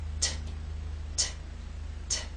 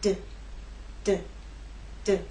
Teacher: You know you're doing it correctly if you can feel the difference between this and its voiced partner, D. These 2 consonant sounds are made basically the same way, but T is quiet, it's unvoiced, and D is voiced. So you'll feel no vibrations when you make the true T sound, t, t, t.